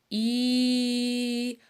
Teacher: хлопчик вимовляє так з відкритим ротиком без жодних перешкод проспівує і голосно протяжно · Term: звук і